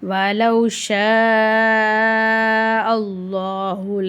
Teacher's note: அல்லான்ற வார்த்தைக்கு முன்னாடி ஜபர் இருக்கிறதுனால அல்லான்ற வார்த்தையை நம்ம வல்லினமாக ஓதணும்.